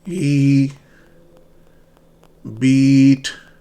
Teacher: Your lips are spread. E and your tongue is in the high front. Hold the E.